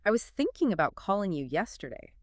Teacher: Thinking, calling, yesterday. Those words naturally carry more stress.